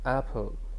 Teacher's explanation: in the word apple the first syllable is stressed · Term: word stress